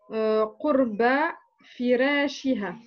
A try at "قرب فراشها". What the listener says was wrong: Essaye de faire un ra mufakham.